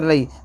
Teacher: الف سے پہلے زبر الف مدہ تھوڑا کھینچ کر پڑھیں گے، لام یا زبر لئی کے اندر یا لین ہوگا، نرم آواز سے پڑھیں گے